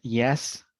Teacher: for the J sound, we know that it is a palatal sound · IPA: /j/